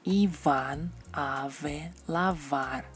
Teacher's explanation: La letra V siempre da el sonido labio dental, V, como el sonido V en las palabras Iván, ave, lavar, o como la V en inglés, por ejemplo en love, heavy, Kevin.